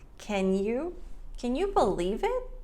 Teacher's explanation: Can you, instead of can you, it goes straight from the N to the y.